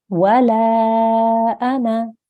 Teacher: we're going to make sure that we don't elongate this noon